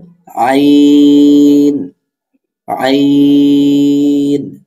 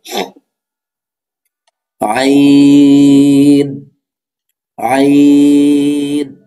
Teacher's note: কণ্ঠনালীর মধ্যখান হতে আইন উচ্চারিত হবে ২ নম্বর মাখরাজ।